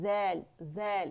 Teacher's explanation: buzzing sound اس میں نہیں ہوگا باریک ہے